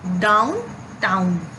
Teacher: स्पॉन्डी में 2 syllables होते हैं। Metrical pattern in a poetry in which both syllables are stressed